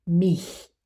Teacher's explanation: when you have I in front of CH for the ich laut, that I is in between closed and open. So for example, the word mich is in between, even though it is written as a small capital I indicating open.